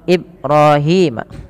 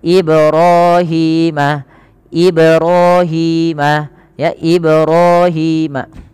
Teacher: pada lafal ba yang dia berharokat sukun, ia dipantulkan, dan ini bacaannya kita kenal dengan bacaan qalqalah.